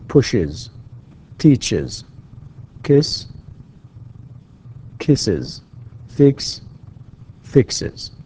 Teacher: So that es at the end becomes is. It becomes is.